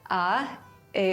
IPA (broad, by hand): a